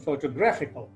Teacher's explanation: in the case of the word photographical the stress falls on the third syllable